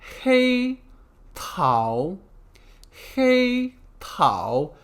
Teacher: hey first tone means black Tao second tone means peach